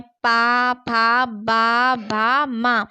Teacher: और ओष्ठ व्यंजन जिसे बोलते समय हमारे ओंठ आपस में लगते हैं उसे हम ओष्ठ व्यंजन कहते हैं। पा, फा, बा, भा, मा ये हमारे ओष्ठ व्यंजन कहलाते हैं।